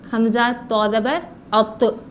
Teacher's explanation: تو, یہ جو توئیں اور زوئیں کہتے ہیں اس کا تو ہے. تو جو ہے زبان کی نوک اوپر کے دانتوں کی جڑ سے ملا کر اس کو موٹا پڑھا جائے